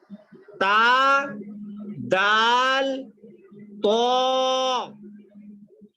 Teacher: زبان کی جو نوک ہے اس کو سامنے کے اوپر والے دانتوں کی جڑ میں لگانے سے دال ادا ہوتا ہے. دال وہیں سے نکلتا ہے جہاں سے تا نکلتا ہے